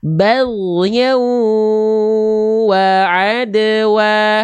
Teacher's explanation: Leburkanlah bunyi nun mati atau tanwin jika bertemu huruf mim, nun, waw ataupun huruf ya. Dileburkan disertai dengung selama 2 harokat. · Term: idgham biguna